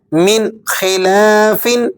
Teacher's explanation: یہاں نون ساکن پر ہم اخفا ادا نہیں کر رہے